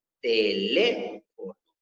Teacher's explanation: la sílaba tónica se encuentra en la sílaba le